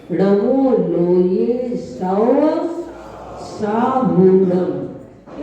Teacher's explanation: बड़ा हू भी है और बड़ा सा भी है, इसलिए ऐसा दीर्घ उच्चारण करना है